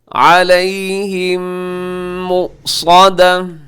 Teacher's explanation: علیہم کے آخر میں میم ساکن، میم ساکن کے بعد جب میم آتا ہے تو وہاں پہ ادغام ہوتا ہے، اسے ادغام شفیع کہا جاتا ہے.